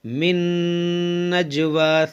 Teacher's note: جیم میں قلقلہ کریں گے